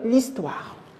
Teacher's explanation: Ce H-là, elle est muet. On ne le prononce pas. On fait la liaison entre L apostrophe et la voyelle I. Ça donne l'histoire. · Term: H muet